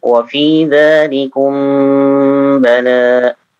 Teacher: Baik, mim sukun bertemu dengan ba. Ditahan lagi.